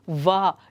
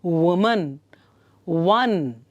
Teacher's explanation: It's not va, it's wa. Curve your lip. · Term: wa sound